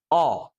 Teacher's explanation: यह जो स्वर है यह आ और ओ दोनों के मध्य का है। मतलब इसमें थोड़ा सा आ भी है। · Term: आगत स्वर